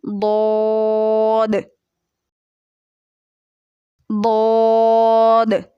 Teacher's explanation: زبان کی سائیڈ کو ہم اوپر کی داڑھوں کی جڑ کے ساتھ ٹچ کریں گے تو ضاد نکل آئے گا · ضاد یعنی کہ زبان کی سائیڈ اوپر کی داڑھوں کی جڑ سے لگ رہی ہے، اور پیچھے سے زبان چونکہ اٹھی ہوئی ہے، آواز بھی پر ہو گئی ہماری